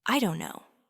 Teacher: the T sound in don't often softens dramatically, almost changing to a very quick light D or even an R sound, especially when it's followed by no. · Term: T softening